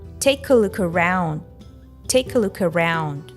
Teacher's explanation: The main stress falls on the word take and when followed by the article a in its weak form uh the two words get linked.